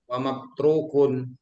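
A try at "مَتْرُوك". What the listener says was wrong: Wadaka matrukun. Matrokun. Tidak ada wanya.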